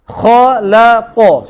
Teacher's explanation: Huruf istifal duduk tengah-tengah, jangan berjangkit dengan huruf isti'la kiri dan kanan. Kena kha tebal, la nipis, qaf tebal.